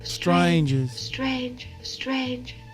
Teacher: hear how there's no R in strangers